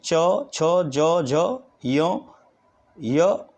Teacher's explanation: तालव्य यानी कठोर तालु से होते हैं